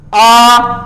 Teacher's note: जिनको बोलने में ज्यादा मुंह खुलता हो विवृत स्वर